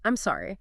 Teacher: The I'm is quick, unstressed, reduced, and sorry needs a clear open o sound